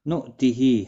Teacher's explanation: حمزہ ساکن کو جھٹکے کے ساتھ پڑھا جاتا ہے، تھوڑا سا آدھے الف کی مقدار کے برابر۔